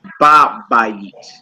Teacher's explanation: the ha is dropped, but the vowel under the ha is preserved. So you still will pronounce that in the house, and not in a.